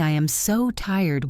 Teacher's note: with your voice going down on tired," it shows you really feel it.